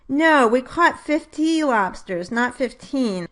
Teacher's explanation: So I might stress the second syllable of both words, which typically have stress on the first syllable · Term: contrastive stress